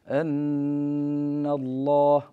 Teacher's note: هذه النون المشددة فيها غنة بمقدار حركتين، لا بد أن نأتي بهذه الغنة وأن تكون بمقدار حركتين.